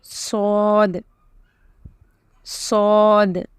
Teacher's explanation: Then you have Sod, Sod. This is a heavy letter, okay? So pronounce it heavily with your lips round.